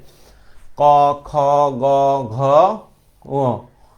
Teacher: ক খ গ উ এগুলো হইছে কোটা থেকে কন্ঠ থেকে